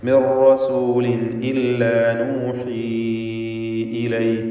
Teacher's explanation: മിർ റസൂലിൻ ഇല്ല നൂഹി ഇലൈ, നൂഹി എന്നതിലെ യാഇൻ്റെ ദീർഘം മദ് മുൻഫസിൽ ജായിസ് എന്നതാണ്. 4-5 ഹറക്കത്തിൻ്റെ അളവിൽ ദീർഘാക്ഷരമായ യാഇനെ ദീർഘിപ്പിക്കുക. ശേഷം അടുത്ത പദത്തിൽ ഹംസ വന്നു എന്നതാണ് ഇതിനുള്ള കാരണം.